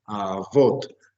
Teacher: el acento lo haremos en la última sílaba